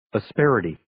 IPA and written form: ə'sperɪtiː (Asperity)